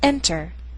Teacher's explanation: words the earth sound is in an unstressed syllable for example this first word is enter the stress is on the first syllable